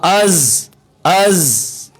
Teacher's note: اور زا میں دیکھیے از، حمزہ زبر زا از از، یہ آ رہی ہے نا سیٹی کی آواز، یہ ہے زا